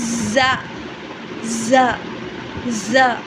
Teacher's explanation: Zah is a light letter but differs from the scene because it is voiced. The sound is produced with a vocal cord.